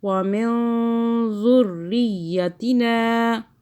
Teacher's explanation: را پہ زور دیں، یا پہ زور دیں، دونوں پہ تشدید ہے